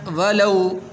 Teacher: واو حروف لین میں سے ہے تو لمبا نہیں کریں گے۔